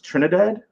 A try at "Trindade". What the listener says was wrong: It's Trindade. And there's no A, so it's just Trindade.